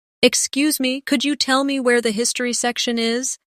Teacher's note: In natural speech, could you becomes could ya.